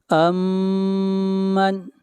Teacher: میم کے اوپر شد ہے، میم کے اوپر غنہ کریں گے